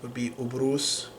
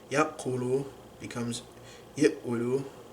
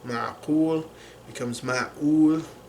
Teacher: the qaf sound also becomes like an epiglottal stop or a hamza in Syrian Arabic and Levantine Arabic